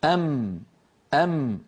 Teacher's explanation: فالميم تخرج كما نرى على اللوحة بانطباق الشفتين أم، ويصاحب ذلك غنة من الخيشوم